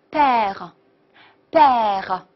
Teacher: 稍微浊化一点，对不对？p▁要浊化一点，变成▁b ，所以连起来就是▁père，非常好。好，中间这个孩子，好▁an▁和▁rn▁的发音呢，我们都已经讲过了，他们都发▁on▁的音。好，d▁在结尾不发音